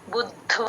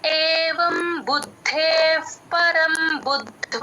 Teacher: బు తర్వాత ద కి ద వ ఒత్తు మహాప్రాణం వ ఒత్తు ఆ మూడు వినిపించాలి